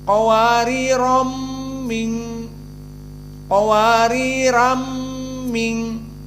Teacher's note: Namun karena ada tanwin ram diidghamkan kepada min.